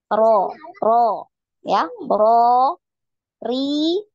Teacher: Nah, di samping makhrajnya tetap ya, jangan pindah. Makhrajnya ujung ujung lidah ya, punggung ujung lidah menempel di gusi ya, gusi gigi seri atas ya.